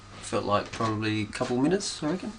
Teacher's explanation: falling tone in English statements usually end in a falling tone the falling tone at the end tells the listener that the statement is finished